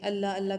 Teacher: اللہ کا لام جو ہوتا ہے ہمیشہ موٹا پڑھا جاتا ہے